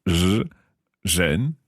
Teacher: And again, what I'm doing to make that sound is basically saying a z, but I'm taking my tongue backwards in my throat